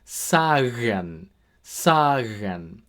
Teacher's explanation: Our second pronunciation with G is something called a voiced velar fricative.